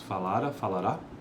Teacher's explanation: o acento em si, por meio do qual distinguimos falara, falará.